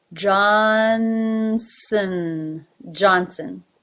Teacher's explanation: The last syllable, which is unaccented, sn, is basically an S straight into the N. Sn. There is a little bit of a schwa thrown in there in the middle.